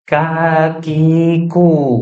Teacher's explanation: lidah bagian pangkal bagian yang paling belakang itu bertemu dengan atau bersentuhan dengan langit-langit yang lunak di belakang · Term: huruf Kaf